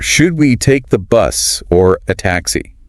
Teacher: Using should we, or to ask for an opinion. Notice the upward inflection on bus and downward on taxi.